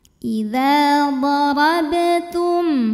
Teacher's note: tum ada hukum idhar syafawi karena mim sukun menghadapi huruf yang bukan mim bukan ba, maka dibacanya mimnya jelas